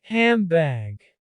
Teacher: handbag handbag the D is omitted and the end modifies to a lip together sound M to make it easier to get to the B which is also a sound made with lips together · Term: assimilation